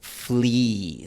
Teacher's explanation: a veces escuchas un poquito de un glide al final o por ejemplo en la palabra flee, dependiendo del acento del hablante inglés puede ser más obvio. · La I inglesa suele ser un poco más larga y termina con una semivocal, con un glide al final.